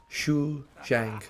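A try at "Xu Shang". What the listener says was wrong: No, you said Shu. It's not like Shu, you dog. It's Choo Choo. You train. Chu Shang.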